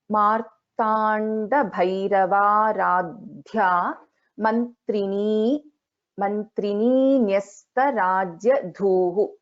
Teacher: Actually we'll have a Dvitvam even for Na. And Bha is a Mahaprana and Dha is again a Mahaprana.